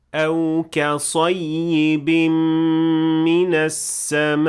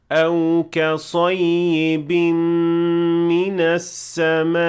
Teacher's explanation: So as you can hear, there is a little ha that appeared after the hamza because I exaggerated the pronunciation of the hamza. This should not happen.